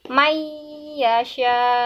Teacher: itu baru disebut dengan ghunnah atau demung ya ini cara bacanya nun sukun ini tidak dibaca tetapi semuanya langsung dimasukkan ke dalam huruf ya ke dalam huruf setelahnya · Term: idgom bighunnah